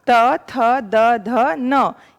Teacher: त, थ, द, ध, न। ये दांत, आपकी जीभ ने दांत को टच किया, तो ये दांत से निकला, तो इसके नाम हो गए दंत्य।